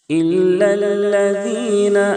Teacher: إلا الذين ذال کو نہایت نرمی سے پڑھتے ہیں. ذال کے ادائیگی میں زا کی طرح سیٹی جیسی آواز نہیں نکلنی چاہیے. بعض لوگ پڑھ دیتے ہیں إلا الذين، لذین نہیں ہونا چاہیے.